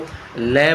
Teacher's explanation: पार्श्विक का मतलब जिभ्या जब होती है तो ल बोलते हैं तो साइड से हवा निकलती है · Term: पार्श्विक व्यंजन